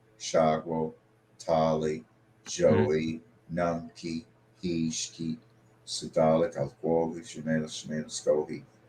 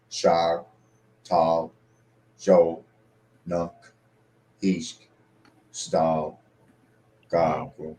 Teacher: informal Cherokee, where like the vowel sounds get dropped on a lot of things and words just get shortened up